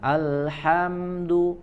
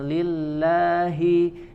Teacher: huruf ha dari tengah tenggorokan, kemudian lillahi di sini dari pangkal tenggorokan